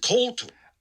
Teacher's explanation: But you can hear that H, that H right after the K. It sounds a little throat cleary, I guess, when you listen and zoom in on it. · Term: aspirated